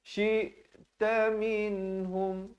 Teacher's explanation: Min dan hum masing-masing izhar. Min izhar halqi, hum izhar syafawi. Kedua-duanya jangan dipanjangkan.